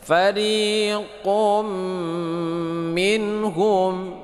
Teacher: Minhum nun mati bertemu dengan ha, ini idhar ha hakiki, dibaca tidak berdengung.